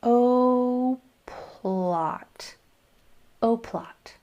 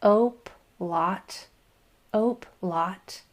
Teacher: Make sure you make your P a nice breathy puff of air. O, plot. Otherwise, this could turn into a two-syllable word if you don't. · You have to blend that L into the P sound. And the best way to do that is to really get a good puff of air with that P.